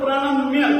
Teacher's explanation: प को व्यंजन ही बोलेंगे प को आप परणम ऐसा नहीं बोल सकते